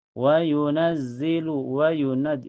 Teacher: Ini nun ditekan ke zai ya karena bertasyid.